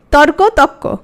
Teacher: তাহলে রটা চলে গেল আর তটা কি হয়ে গেল? দ্বিত্ব হয়ে গেল। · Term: রকার লোপ